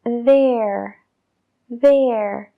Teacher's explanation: el segundo sonido da es más suave y sí que usamos nuestra voz para crearlo